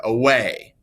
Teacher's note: we have an unstressed syllable at the beginning and we have a stressed because we put more stress on the end of that word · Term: I am